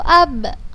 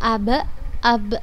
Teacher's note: Karena huruf ba mempunyai sifat qalqalah. Jadi kita membacanya dengan memantulkannya.